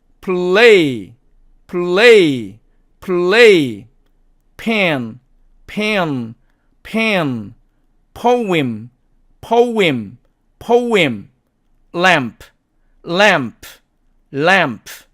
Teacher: 발음은 프처럼 발음을 하되 무성음이므로 목청을 울리지 않습니다.